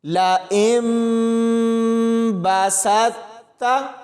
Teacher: اور آگے دیکھیں ساکن حرف کے بعد شد ہے، تو جہاں بھی ساکن حرف کے بعد شد آ جائے تو ہم نے پچھلے حرف کو شد والے حرف کے ساتھ ملانا ہوتا ہے، ساکن حرف کو چھوڑ دیا جاتا ہے. تو یہاں پر سین کو تا کے ساتھ ملائیں گے اور سختی سے پڑھا جائے گا